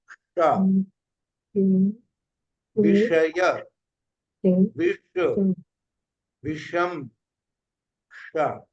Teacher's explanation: जिह्वा मूर्धा के पास 90 डिग्री के कोण में उठेगी, शा निकलेगा।